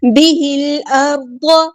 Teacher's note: لام یہاں پہ لام قمریہ ہے، اس کو ہم ظاہر کریں گے